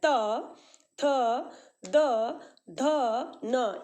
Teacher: त देखिए दंत से स्पर्श कर रहा है त थ द ध न ये जीभ को दांत से स्पर्श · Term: त वर्ग